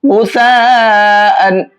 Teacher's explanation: مد متصل کو 4 سے 5 الف کے برابر، یا یوں کہہ لو کہ 4 سے 5 سیکنڈ تک اس کو کھینچتے ہیں، اور اس تنوین کے اندر اظہار کر کے پڑھیں گے، غنہ اخفا نہیں کریں گے۔